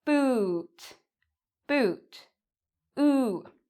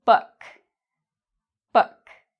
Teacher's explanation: So I have here two lips. In this case, the lips are rounded, boot. So in boot, if I slow it down, my lips actually make a circle.